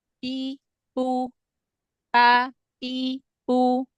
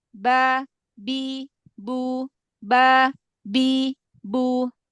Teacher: kalau yang dirapatkan bibir bagian luar Nanti yang keluar huruf P P bukan bukan B